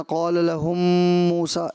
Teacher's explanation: ادغام شفوی، میم ساکن کے بعد یہاں غنہ تھا، اس میں کچھ کمی محسوس ہوئی۔